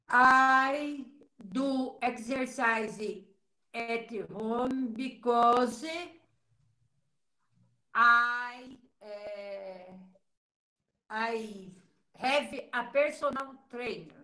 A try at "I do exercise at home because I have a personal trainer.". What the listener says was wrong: Perfect. Very good. Very good.